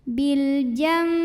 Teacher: membunyikan hukum iqlab ini ada dua pendapat ulama yang pertama adalah dengan cara merapatkan bibir tapi yang Rapat ini tidak menekannya jadi lunak rapatnya